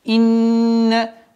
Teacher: Удержание, назализация в размере двух огласовок.